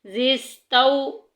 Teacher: واو مدہ کے لیے واو ساکن پیچھے پیش ہونا ضروری ہے، یہاں پہ واو مدہ نہیں ہو رہا، واو لین ہو رہا ہے۔ زستو، لین کو لمبا نہیں کیا جاتا